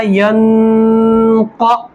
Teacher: اب چونکہ نون ساکن کے بعد حروف اخفا جو آپ نے پچھلے پڑھ لیا ہے، پچھلے سبق میں آپ کو پڑھا چکے ہیں، تو اس میں نون ساکن کے بعد قاف آ رہا ہے تو یہاں پر ایک الف کے برابر اخفا کیا جائے گا. تو پڑھا جائے گا ینقا، لام زیر لی، ینقلی.